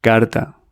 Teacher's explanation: It's a sound made by tapping your palate with your tongue. It's halfway between L and D.